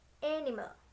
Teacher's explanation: Primary stress is on the first syllables and all other syllables and unstresses. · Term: stress pattern 1